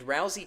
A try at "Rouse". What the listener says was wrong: Why do you say Rouse like that? No, you said Rousey.